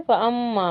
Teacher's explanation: मीम पर तजदीद है, अच्छे से गुन्ना करके पढ़ेंगे